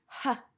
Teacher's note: the sound is not blocked the mouth is open but the sound is a consonant sound because it is unvoiced